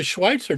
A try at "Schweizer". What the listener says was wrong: Yes, no, it's actually my last name's pronounced with a T in it, but yeah, but there is no T.